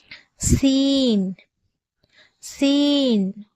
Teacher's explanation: எழுத்து சீன் சீனுடைய மகர பிறப்பிடம் ஜா என்ற எழுத்துடைய மகரஜ் பிறப்பிடம் மாதிரியே கீழ் பற்களின் நடுவில் அதோட ஓரங்களை தொடும்போது சீனுடைய உச்சரிப்பு வந்து பிறக்கப்படுகிறது